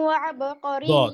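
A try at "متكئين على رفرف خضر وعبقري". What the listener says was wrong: দদ সুন্দর হয় নাই, দদ মোটা হয় নাই, এটা ইদবাকের হরফ, মোটা করতে হবে। শব্দটা একটু কঠিন উচ্চারণ করা, যেমন খুদ্রিউ, খুদ্রিউ ওয়াব। বাতাস বের করা যাবে না দদের মধ্যে, হ্যাঁ, দদের মধ্যে হামস নাই এবং কলকলাও নাই, তাই না? দদ কি করতে হবে? হ্যাবি করতে হবে, ইস্তেআলা করতে হবে।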